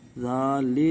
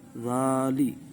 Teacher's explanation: सीटी की आवाज़ बिल्कुल पैदा नहीं करनी। ज़ेर को, जिसको कसरा भी कहते हैं, मारूफ पढ़ना है। ज़ाली, ज़ाले नहीं करना, ज़ाली।